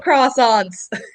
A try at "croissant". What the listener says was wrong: She replaces the R with a W.